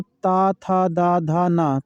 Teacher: तो जब ता था दादा बोलते हैं तो ये हमारे क्या जिह्वा हमारे दांत को स्पर्श करती है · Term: ता वर्ग